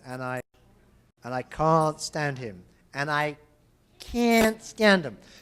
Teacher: they both glottalize the T